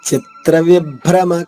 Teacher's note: విసర్గ ఉచ్చారణ హ లా పలకాలి